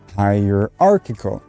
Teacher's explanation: notice hierarchical i'm putting a bit more stress on that arc there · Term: word stress